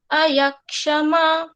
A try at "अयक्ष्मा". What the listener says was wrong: ये जो है अयक्षमा ऐसे नहीं है, क्योंकि क्ष ककार और मूर्धन्य शकार दोनों ही यहाँ पर शुद्ध हैं, हलंत है, तो अयक्ष्मा ऐसे बोलना है, अयक्ष्मा, क्षमा, हाँ अयक्ष्मा ऐसे।